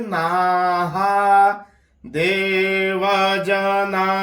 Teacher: अब ना के बाद जो आपको 2 बिंदियां दिख रही हैं, इसमें हा का उच्चारण करना है। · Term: विसर्ग